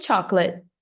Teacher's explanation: a depender do seu sotaque, nem o T você pronuncia.